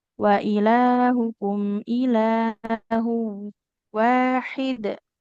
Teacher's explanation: kemudian ini tanwin bertemu idgham bi gunnah ya. Ditahan dulu.